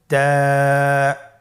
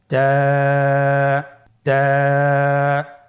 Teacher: জিহ্বার আগা সামনের উপরের 2 দাঁতের গোড়ার সঙ্গে লাগিয়ে উচ্চারিত হয়।